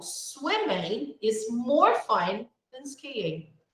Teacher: comparing sometimes we stress the comparative adjective we are using okay the word then is less important so we don't stress it we say it quickly